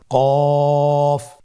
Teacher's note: কফের মাখরাজ হলো জিহ্বার গোড়া তার বরাবর উপরে তালুর সঙ্গে লাগিয়ে উচ্চারিত হয়